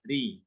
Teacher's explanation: Ro dibaca tipis kalau dia dalam keadaan kasroh ya.